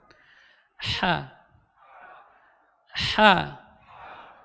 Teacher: keluar dari tengah-tengah tenggorokan